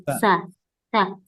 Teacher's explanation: huruf Sin itu berasal dari ujung lidahnya ujung lidah nempel ke gigi seri ee seri bawahnya gitu ya Nah sedangkan tengah-tengah lidah itu tidak